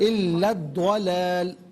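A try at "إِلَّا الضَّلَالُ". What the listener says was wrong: داد پر زبر ہے، دولال، دلال نہیں، داد پر زبر ہے،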